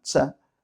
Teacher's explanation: no es ni Cha ni Sha, está justo en medio, es como una Cha, una explosión muy leve, eso también es una cosa muy malagueña.